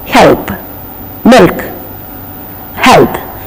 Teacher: The tongue goes and touches the middle of the palate. The sound is slightly different. That's called the dark L.